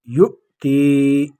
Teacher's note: یؤتی یا مدہ یا ساکن آگے زیر ہے۔ یؤتی ایک الف کی مقدار اس میں آواز کھینچیں گے